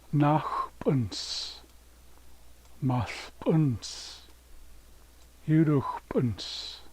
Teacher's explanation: S always sounds like S. It doesn't sound like Z, like in English.